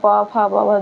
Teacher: दोनों ओष्ठ आपस में छुआएंगे · और उसके नीचे आएंगे तो प फ ब भ म, ये ओष्ठ होते हैं, ऐसे बोलेंगे प फ ब भ, दोनों ओष्ठ आपस में छुएंगे।